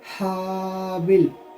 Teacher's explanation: ہا جو ہے یہ درمیان حلق سے ادا ہوگا